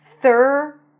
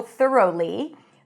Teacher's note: You can also pronounce it as TH'R-row-lee with a long 'ow'